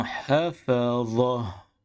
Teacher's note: Huruf ta marbuta ketika wakaf ditukarkan bunyinya kepada huruf ha